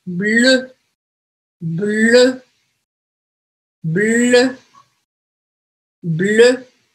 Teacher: esse som, EU, ele vai ficar bem mais fechadinho